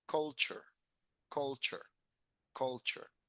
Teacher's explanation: Y la T y la U sabemos que suena ch, ch, culture, culture, culture.